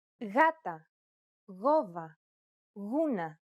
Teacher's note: when it precedes an A, O, or U, however, it's pronounced like a loosely held G sound.